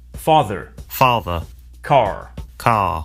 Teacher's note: Notice that the final R sound is not pronounced in British English.